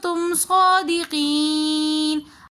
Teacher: तुम सौदिकीन में सौद के ऊपर खड़ा ज़बर आ रहा है, तो इसलिए हम सौद को एक अलिफ की मिकदार खींच कर पढ़ेंगे। तुम सौदिकीन में या मद्द के बाद नून साकिन आ रहा है, तो इसलिए हमने इसको थोड़ा सा खींच कर पढ़ा।